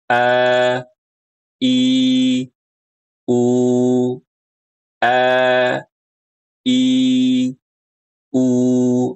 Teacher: Hamzah dan ha keluar dari tenggorokan bagian bawah.